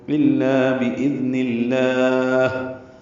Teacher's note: نون کی زیر کی وجہ سے لام اس میں ذرا باریک پڑھیں گے